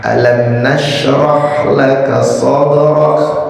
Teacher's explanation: ro-nya termasuk dibacanya tebel karena ro-nya yang di fathah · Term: tafkhim ro